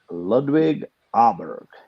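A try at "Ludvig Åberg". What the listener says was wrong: Oberg. But the A with the circle on top is pronounced as an O, I believe.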